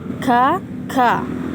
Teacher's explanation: Dan ketika membaca ka, sedikit berdesis, ka, seperti biasa, ka, namun sedikit berdesis di akhir